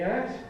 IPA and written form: æt (at)